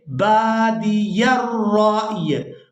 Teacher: را حمزہ یا زبر رائی، یہاں پر را کو ہم نے حمزہ ساکن کے ساتھ بھی ملانا ہے اور یا ساکن کے ساتھ بھی ملانا ہے۔ یہاں وقف کی صورت میں یا بھی ساکن ہو جائے گی